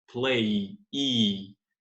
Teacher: esse i tem uma forte vibração das cordas vocais. Então, play é voiced.